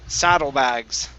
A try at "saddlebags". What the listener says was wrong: Okay, so right here you're saying saddle. Okay, and you're swallowing that sound. Open your mouth up a little bit. Saddlebags.